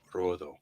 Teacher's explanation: Well, it's Colorado if you're going to say it in Spanish, because it'd be colo, like color, and then rodo, or like red, rodo, with that sort of TH D. A D that sort of becomes sort of a TH sound